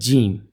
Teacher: جیم آپ کی زبان سینٹر سے آپ کے تالو کی طرف جو ہے وہ لگے گی، تو جیم ادا ہو جائے گا۔